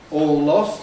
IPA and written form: ˌɔːl ˈlɒst (all lost)